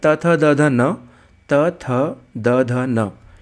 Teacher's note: त का उच्चारण करेंगे आप तो आपकी जीभ आपके दांतों से टकराएगी